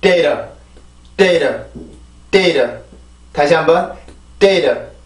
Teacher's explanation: 그래서 이 발음을 만들어 줄 때는 아까 말했던 이 T조, 처음에 T 발음을 하기 위한 그 위치로 혀가 가기는 하는데 T가 붙었다가 이렇게 떨어지는 게 한번 세게 붙었다가 떨어뜨리면서 소리를 만드는 게 아니라 살짝 터치만 해주는 거예요. · 영국식 영어는 안 그런데 미국식 영어는 이 T의 약화 현상이 굉장히 많이 나요.